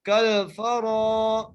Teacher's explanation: کو لام سے ملا رہے ہیں، فا کے اوپر زبر ہے، را کو ایک الف کی مقدار کھینچ کے پڑھ رہے ہیں، را کو موٹا کر کے پڑھے ہیں